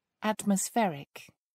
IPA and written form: ˌætməsˈfɛrɪk (atmospheric)